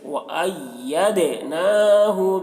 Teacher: دال کی آواز بھی ڈبل نکلے گی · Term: قلقلہ